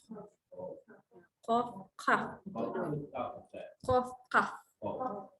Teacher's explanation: keluar daripada pangkal lidah yang diangkat kepada langit-langit lembut